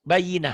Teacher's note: Tak marbutoh bunyinya jadi bunyi Ha.